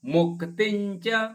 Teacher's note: ಮುಕ್ತಿಂಚ ಮು ಕಿ ಕೆತ್ತ ಅನುಸ್ವಾರ ಅರ್ಧ ಞ,